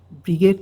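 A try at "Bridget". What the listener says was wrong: ব্রিজেট, হ্যাঁ, DG J, যেমন আমরা ব্রিজ বলি, BRIDGE, হ্যাঁ, ব্রিজেট, অনেকে ব্রিগেড বলবে, সমস্যা নাই, এটা বললেই হলো, বানানটা যেন ঠিক থাকে, হ্যাঁ।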